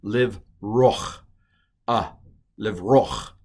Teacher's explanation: Now, you may not have noticed, but to get from O to ch, you have to stick a little A in there · That's called a furtive patak. It's a patak, but it's a furtive patak. It's a little A